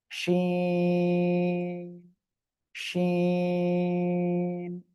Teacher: জিহ্বার মাঝখান তার বরাবর উপরে তালুর সঙ্গে লাগিয়ে শাসা শব্দ করে শিন, শিন, তিন আলিফ টান হবে।